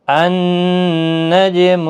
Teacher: جیم ساکن پر قلقلہ ہوگا۔ جب بھی الف لام شروع میں ہوتا ہے تو زبر کے ساتھ ہی پڑھا جاتا ہے۔